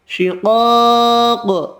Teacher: شقاق دو قاف دونوں حروف مستعلیہ پر پڑھیں گے، الف مدہ ایک الف کی مقدار میں کھینچ کر پڑھیں گے. یہ قاف ساکن پڑھا جائے گا وقف کی صورت میں، اور قاف ساکن پر قلقلہ بھی کریں گے